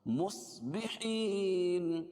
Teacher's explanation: صاد کو موٹا پڑھیں گے، حروف مستعلیہ میں سے ہے. بحین یا ساکن سے پہلے زیر ہے اس لیے یا مدہ، اس کو ایک الف کے برابر کھینچ کے پڑھیں گے، اور وقفہ کی صورت میں یہاں مد عارض وقفی ہوگا.